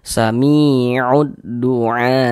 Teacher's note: Maka huruf yang memiliki harakat kasrah dibaca panjang. Seya mi dibaca panjang. Mad thobi'i panjang dua harakat. Samiud dua.